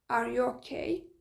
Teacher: Görürsünüz, okay deyəndə səs tonu qalxır.